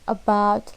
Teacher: short mid central spread vowel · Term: schwa, Schwa